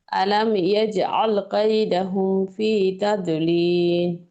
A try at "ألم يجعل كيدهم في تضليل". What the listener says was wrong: দাদু, এরকম হবে না, হ্যাঁ, কলকলা যেন না হয় আমাদের। তদলিল, তদলিল। দাদু, এরকম না, তদলিল।